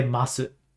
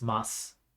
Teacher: today we're going to talk about the masu form it's mus the U just kind of drops off the end of it